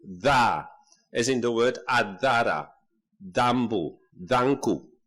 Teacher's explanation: There is also a specific sound, a dental plosive